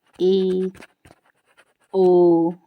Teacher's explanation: अब अर्ध संवृत की बात करते हैं, तो जिन स्वरों के उच्चारण में क्या होता है, मुख द्वार आधा बंद रहता है